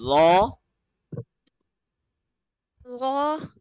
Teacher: So, in the letter Zha, which is the sister of Tha, we earlier learned that the tip of the tongue is touching at the back side of the upper bunny teeth